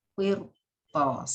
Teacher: Ra sukun sebelumnya kasroh, tapi roknya itu bertemu dengan huruf isti'la. Itu dibacanya dengan tebal. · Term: tafkhim